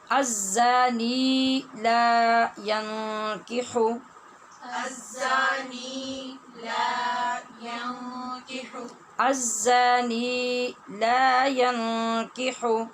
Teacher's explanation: ینکح، یہاں نون ساکن ہے اور اس کے بعد جو کاف ہے اس کی وجہ سے یہاں اخفا ہوگا غنّے کے ساتھ